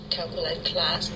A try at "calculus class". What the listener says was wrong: You want to say calculus class with an S, so you do sometimes have problems pronouncing the S on the ends of your words, so be careful about that. So calculus class.